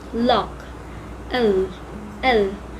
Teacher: the tongue is in the middle part of your mouth, and the air goes on the side.